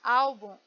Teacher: A palavra álbum, ela tem duas sílabas, a última e a penúltima. Então, nesse caso, a penúltima é a mais forte. Álbum, olha como eu coloco mais força no ao, né? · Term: paroxítona